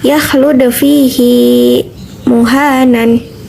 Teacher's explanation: hi dalam kalimat fihi tersebut mesti dibaca panjang walaupun huruf yang sebelumnya itu mati. Mad mubalaghah ialah tekanan suara pada hi dari fihi.